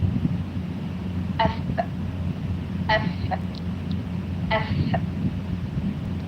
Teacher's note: my upper teeth touching or uh yes hitting my lower lip.